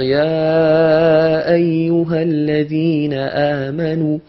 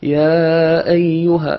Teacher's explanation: au lieu de faire 4 ou 5 temps, je dis 3 temps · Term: al-lahnu al-khafi